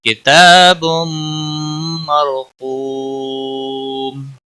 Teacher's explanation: بم تنوین کے بعد حروف یرملون کا میم آیا ہے، ادغام باگنہ ہوگا. را ساکن سے پہلے زبر ہے، اس لیے را کو پر پڑھیں گے · قاف حروف مستعلیہ میں سے پر پڑھا جائے گا · قو کو نہیں ہے، کو واو ساکن سے پہلے پیش ہے، اس لیے واو مدہ ہے ایک الف کے برابر کھینچ کر پڑھیں گے. وقف کی صورت میں میم ساکن پڑھا جائے گا، وقف بالاسکان ہوگا. 3 سے 5 الف کے برابر کھینچ کر وقف کریں گے